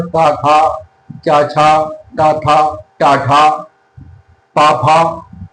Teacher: अघोष में स्वरेंद्रियां झंकृत नहीं होती, इसलिए इन्हें अघोष कहा जाता है